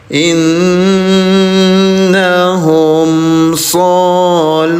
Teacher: Innahum shunar nun bertasdid. namanya gunah dengungkan dua harakat